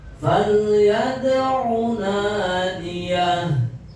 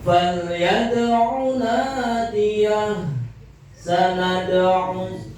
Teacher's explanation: Cepat ya, pantulannya cepat karena di sini masuk kategori qalqalah sugro.